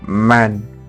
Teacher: M, voiced, bilabial, nasal, as in man